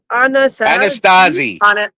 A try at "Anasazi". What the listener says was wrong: Anasazi. There is no T at the end.